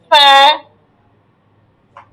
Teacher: জি সিন শিন শিন صاد صاد ضاد ضاد طاء ظا ظاء ظا عين عين غين غين فا فا ফা ফা ঠোঁটটা কামড় দিবেন, উপরে দুই দাঁতের আগাটা নিচের ঠোঁটের মাঝখানে কামড় দিবেন।